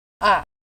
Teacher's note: The fourth tone is pronounced as a falling tone, roughly from the upper third of your speaking range to the lower third.